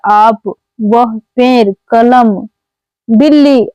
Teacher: शब्दों के उच्चारण में वायु केवल मुख से बाहर आती है उसको निर्नुनासिक स्वर कहते हैं।